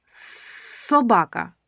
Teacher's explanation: Дзвінкий чи глухий? Ми чуємо тільки шум, тому звук с глухий.